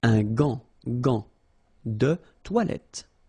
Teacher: you've got this A-N, so it's nasal, gant, and then final T is not pronounced here